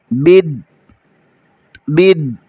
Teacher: دال کے اوپر شد ہے، دال پر کلکلا بھی ہوگا